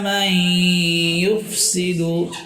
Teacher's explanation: নুন সাকিনের পরে ইয়া, ইদগামে বা গুন্না